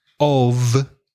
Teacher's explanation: of with one F is like a V sound